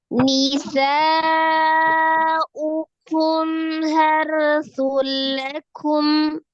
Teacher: Nun sukun atau tanwin bertemu dengan huruf lam hukumnya adalah idgham bila gunnah. Idgham itu artinya dilebur, ditasdidkan. Berarti sun jadi sul langsung di lam, tapi tidak disertai dengan dengung. Jangan didengungkan begitu ya.